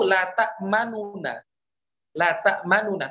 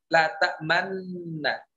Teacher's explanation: La ta'manuna, tapi diidghamkan menjadi la ta'manna. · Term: idgham kabir